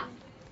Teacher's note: Actually, there is a vibration. The sound is a voice sound. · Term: lateral sound